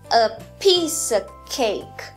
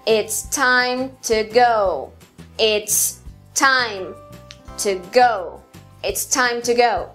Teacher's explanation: O terceiro padrão tem dois momentos altos na frase. Começa fraco, forte, fraco, forte.